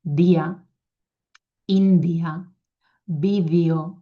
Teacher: I va a les dents, o sigui, el lloc és punta de la llengua a les dents i la manera és ràpida